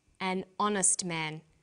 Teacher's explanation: the h is not pronounced so honest sounds like it starts with a vowel